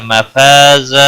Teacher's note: مفا الف مدہ ہے ایک الف کے برابر کھینچ کر پڑھیں گے